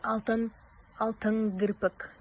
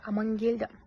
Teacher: н к дауыссыз дыбыстары бір-біріне ықпал етіп ң әріптеріне өзгертіледі.